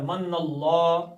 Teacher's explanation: اللہ کا لام موٹا پڑھنا ہے، پیچھے زبر آگئی ، زبر پیش ہو تو موٹا، پیش زیر آئے تو پتلا،